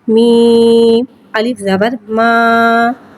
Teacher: الف سے پہلے زبر آ رہا ہے، الف مدہ ہو رہا ہے، لہذا حرف مدہ کو ایک الف یعنی 2 حرکات کے برابر کھینچ کے پڑھیں گے اور زبر کو منہ کھول کے ادا کریں گے۔